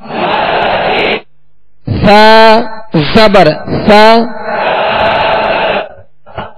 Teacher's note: سا کو نرمی سے پڑھیں گے، اس میں سیٹی کی آواز بالکل پیدا نہ ہو، نرمی سے ادا کریں گے